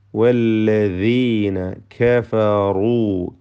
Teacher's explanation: റായിന് മാത്രമാണ് തഫ്ഖീം വരുന്നത്, തടിപ്പിച്ചോതേണ്ടത്. മറ്റക്ഷരങ്ങൾക്ക് തഫ്ഖീം വരാതെ ശ്രദ്ധിക്കുക.